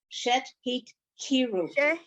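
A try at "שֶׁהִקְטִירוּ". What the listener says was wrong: No T. Shehik tiru.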